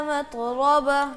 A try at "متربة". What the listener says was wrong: تا ہے یا تو ہے یہ بتاؤ. ہاں باریک کر کے پڑھنا ہے, اس کو موٹا نہیں کرنا. متربہ. تھوڑا سا اس کو اور نا, اس میں صفت حمس بھی ہے. متربہ متربہ.